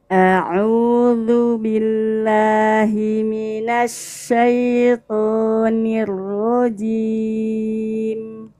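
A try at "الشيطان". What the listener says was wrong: Ayo huruf syanya, ujung lidahnya tekan ke bawah. Syaiton. Ash tuh. Kalau as itu tuh ujung lidah nih gini. As salah. Tapi gini kan. Jadi ujung lidahnya itu ditekan ke bawah, nggak boleh kena gigi. Nggak boleh kena gigi.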